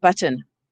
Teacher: We go right from the t to the n. So it forms the basis of the syllable without a vowel, but we said, oh, let's stick a vowel in there. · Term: syllabic consonants